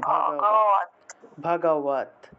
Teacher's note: এই হসন্ত যুক্ত দ টাকে আবার ত তের মত উচ্চারণ করতে হবে তাহলে উচ্চারণটা হবে ভগ কি হবে ভগবত হ্যাঁ ভগবত ভগবত ভগবত